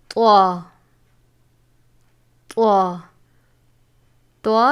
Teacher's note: طا زبان کی نوک اور اوپر کے دانتوں کی جڑ سے ادا ہوتا ہے